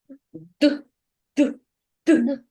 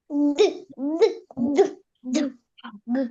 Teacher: Коли ми вимовляємо звук д, наш язичок піднімається до верхних зубчиків. Горло наше працює. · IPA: [д]